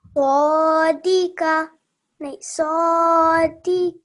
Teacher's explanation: that was a nice thick sad